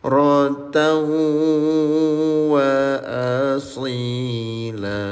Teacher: Leburkan bunyi tanwinnya disertai dengung selama dua harakat. Namanya idgham bigunah.